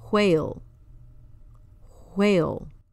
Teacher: It almost sounds like you're making the H sound before the W.